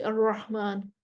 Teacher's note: الرحمن، را موٹی ہے، ہا کو گلے سے نکالنا ہے، اب را کو موٹا کرتے کرتے ہا کو بھی موٹا کر دیا